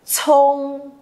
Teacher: Đọc là chờ nhưng mà bật hơi ra cho cô.